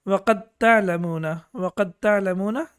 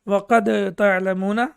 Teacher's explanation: وَقَدْ تَعْلَمُونَ, and we know that here dal is sakin, and the rule of the tajweed is when dal and ta come together, as we know that the makhraj is the same, and that's why dal will not be pronounced, and we will recite it as وَقَدْ تَعْلَمُونَ.